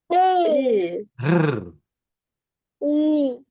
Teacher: Dan R tu lidah kena bergetar